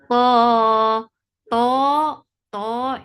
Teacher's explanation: it has itbaq, and you are lifting your tongue up and pasting it on the palate, and that is making the most heaviest letter. So make it two counts long.